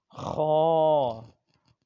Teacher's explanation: اس میں خراش سی ہو، اور یہ حروف حلقی ہے